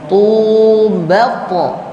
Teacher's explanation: Tu-nya agak panjang dua harokat. Tu, bepo. Nah, pantulannya harus bunyinya o ya.